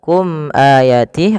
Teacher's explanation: izhar syafawi yaitu suara mimnya dijelaskan izhar artinya jelas syafawi berkenaan dengan bibir kita